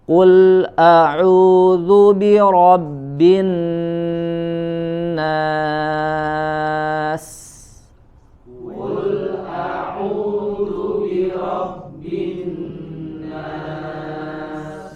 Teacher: Oke, di huruf pertama pada surat An-Nas ini ada huruf qaf ya, harokat dhammah, dia dibaca memonyongkan bibirnya ya, mulutnya, kemudian juga dibaca dengan tebal ya